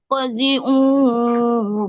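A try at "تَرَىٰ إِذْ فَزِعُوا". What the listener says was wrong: Bukan qazi, itu kan fa.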